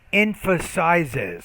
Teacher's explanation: you want to put that extra syllable at the end when you add the es